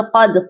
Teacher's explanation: قاف کو موٹا پڑھیں گے اور دال جو ہے حروف قلقلہ ہے، اس پر ہم قلقلہ کریں گے، آواز کو ڈبل کریں گے